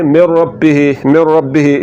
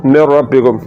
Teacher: نون کو جب را میں ملا دیں گے تو مکمل ادغام ہوگا، نون کی صفت غنہ باقی نہیں رہے گی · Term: ادغام تام